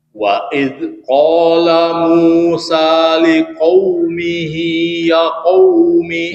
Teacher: Ya qaumi, ya dua harokat